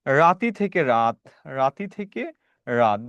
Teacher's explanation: রাতি, ই শেষে ই উচ্চারণ হচ্ছিল, সেই ইটা এখন আর উচ্চারণ হচ্ছে না, এখন হচ্ছে রাত, রাত। অর্থাৎ এই যে শব্দ শেষে ইটা, এই ইটা লোপ পেয়েছে। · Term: অন্তঃস্বরলোপ